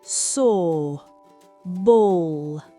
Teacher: Pour O, arrondissez les lèvres pour un O long.